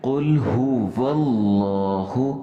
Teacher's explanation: یہ بیچ میں جو الف کو حمزہ بنا لیتے ہیں یہ نہیں بنانا چاہیے، قل هو اللہ یوں پڑھنا چاہیے، احد۔